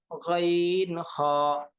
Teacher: তিন নম্বর মাখরাজ হলকের শেষ হইতে